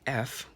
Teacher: go so for example we have the f we have so i'm not really using my vocal chords i'm just pushing out here